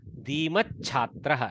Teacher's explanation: Alpa prana cha followed by Mahaprana chhatraha.